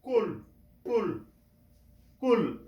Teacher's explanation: কফ উচ্চারণ হবে কণ্ঠনালীর শুরু থেকে সেজন্য আমরা কিভাবে উচ্চারণ করব কুল কুল কুল এইখান থেকে কুল